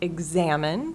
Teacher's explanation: examine stress on the second syllable